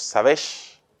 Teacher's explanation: Se ha palatalizado la S y ha caído la propia vocal palatal del diptongo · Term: Se palataliza